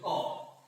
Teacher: কণ্ঠ মূলীয় অঘোষ অল্প প্রাণ ধ্বনি